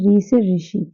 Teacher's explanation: ऋ हमारा सिर्फ एक ऐसा स्वर है जो कि मूर्ध से उच्चारित होता है। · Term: मूर्धन्य